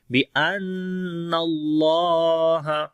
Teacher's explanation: الم یعلم بی، الم یعلم بی، بِأَنَّ اللہ، نون کے اوپر شد ہے، غنہ کریں گے اور اللہ کے نام سے پہلے زبر ہے، اللہ کا نام موٹا پڑھیں گے، یعنی کہ اللہ کے نام کے اندر جو لام ہے اس کو موٹا پڑھتے ہیں. بِأَنَّ اللہ، اور لمبا بھی کریں گے، کھڑی زبر ہے.